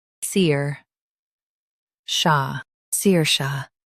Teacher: Stress Sear and soften Sha.